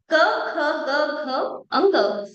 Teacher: कंठस्थानातून आलेले हे व्यंजन